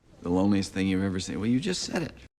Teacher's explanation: he links this first thought right into the second thought without a break